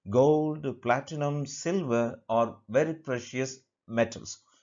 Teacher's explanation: only the last word lost option will take falling intonation whereas the rest of the options will take only rising intonation · metals will take falling intonation